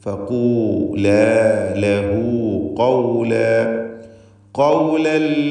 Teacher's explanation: ഫഖൂല ആവർത്തിച്ച് വരുന്ന ഖാഫ് തഫ്ഖീം ചെയ്യേണ്ട അക്ഷരമാണ് ഇസ്തിഅലാഇൻ്റെ. ആദ്യത്തേതിന് ളമ്മാണ് നിസ്ബിയായ തഫ്ഖീം.